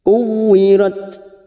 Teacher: upayakan kita baca secara hamas dan siddah, maka yang terdengar kuwirat. Namun perlu dihati-hati juga jangan sampai keluar dari makhraj pada huruf ta ini, karena biasanya ada yang terdengar seperti idza syamsu kuwirat.